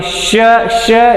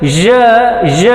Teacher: ಶ ಅಲ್ಲಿ ವಾಯ್ಸ್ಲೆಸ್ ಆಗಿತ್ತು, ಜ ಜ ವಾಯ್ಸ್ ಇಡೋ ಸೌಂಡ್ ಆಗಿತ್ತು.